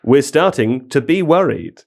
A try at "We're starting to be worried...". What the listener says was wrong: the ellipsis I don't think you pronounced properly